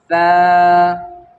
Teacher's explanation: اب فا جو ہے زبان باہر نکال کر ادا کریں گے